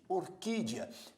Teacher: orquídea primeiro nós temos aqui a semivogal e e depois a vogal a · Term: ditongo crescente